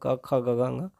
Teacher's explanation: कवर्ग मतलब क, ख, ग, घ, ङ, इसका उच्चारण कंठ से होता है। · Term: कंठ वर्ण